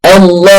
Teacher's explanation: مفيش هواء خالص بيطلع من الخيشوم، بكده انا بنطقها صح